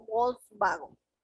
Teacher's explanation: el alemán por otro lado pronuncia a la w como una v